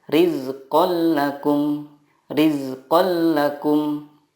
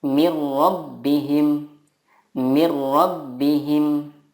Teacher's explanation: Idgham bila gunnah adalah nun sukun atau tanwin bertemu dengan lam atau ro. Cara membacanya, meleburkan nun sukun ke huruf berikutnya tanpa gunnah.